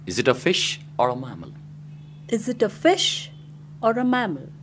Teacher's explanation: alternative questions. First we use rising tone and then at the end falling tone.